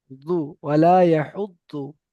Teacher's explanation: এখানে এই দোয়াদের উচ্চারণটা না ডাইরেক্ট দ হবে আর না ডাইরেক্ট জ হবে। দুটোর মাঝখান থেকে